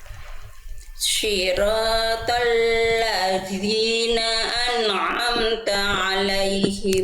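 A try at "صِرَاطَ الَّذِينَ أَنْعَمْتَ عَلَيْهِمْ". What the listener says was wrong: Sekali lagi, zalnya masih berat. Jangan terlalu berat. Jadi ringan saja, Bunda. Sentuhkan tipis-tipis, jangan digigit. Jangan digigit. Ladzi, asal nempel dikit aja, nempel dikit nih. Jadi kalau tadi Bunda masih terdengar berat, nah masih begitu.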